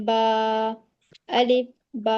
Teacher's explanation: बा के साथ अलिफ जुड़ा है तो उसे हमें खींच कर पढ़ना है